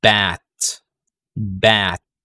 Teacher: unrounded, open wide. So kailangan nating buksan or kailangan nating open yung ating lips at yung ating lower jaw.